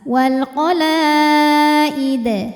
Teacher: maka dibaca dengan pantulan yang besar. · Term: qalqalah kubra